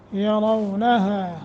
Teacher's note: یرونہا را کو موٹا کر کے پڑھیں گے